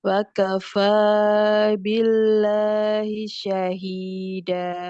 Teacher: Billahi lamnya dibaca tipis karena sebelumnya kasroh. Terus syahida haknya ini mat karena kasroh bertemu dengan ya sukun.